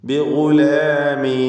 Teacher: സാക്കിനത്തായ നൂനിൻ്റെ സുക്കൂനിനെ കസ്റാക്കി, മക്സൂറത്താക്കി, കസ്റ നൽകി ബിഗുലാമിനിസ്മുഹു എന്നുച്ചരിക്കണം